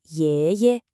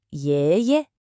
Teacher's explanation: It's got this rising tone, almost like you're asking a question twice.